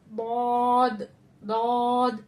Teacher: जबान की करवट 5 दाढ़ों से लगेगी, ऊपर के 5 दाढ़ों से लगेगी, तो मोटी आवाज में हमारा दौद दौद अदा होगा, ठीक है। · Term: दौद का मखरज